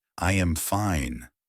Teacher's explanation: A statement goes down like I am fine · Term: Intonation